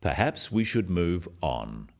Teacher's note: This falling intonation makes it a more definite statement rather than a suggestion. · The first one, "Perhaps we should move on," is phrased as a suggestion, but it is said in a firm way with a falling intonation at the end